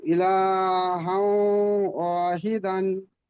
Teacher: তানবিনকে ওয়াও এর সাথে মিলিয়ে একালি পরিমাণ গুণনা করে পড়িতে হয়।